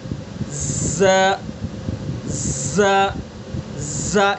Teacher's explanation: اور دو نیچے والے اسی کے نیچے بالکل ثنا سفلا، تو زبان کی نوک کو ثنا سفلا کے کنارے پر لگائیں گے اور تھوڑا سا ثنا علیا سے بھی ٹچ کریں گے